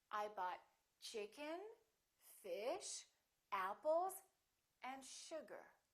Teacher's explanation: each of those items that you list should have a rising intonation i bought chicken fish apples and sugar the last one · The last one will have falling intonation.